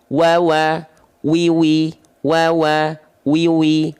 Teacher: Makhraj atau tempat keluar huruf waw itu dari asyafatain. Asyafatain ini artinya kedua bibir atau antara kedua bibir. Ya, dengan posisi maju seperti mengucapkan huruf U.